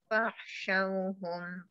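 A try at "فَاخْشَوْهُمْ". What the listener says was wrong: Kat situ kha tu fakhshawhum fakh. Dia macam tak masuk kha tu, dia tak kuat.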